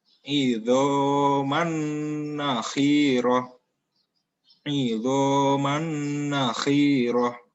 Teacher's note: Jadi sebelum masuk ke nun, ya, mannya ini didengungkan terlebih dahulu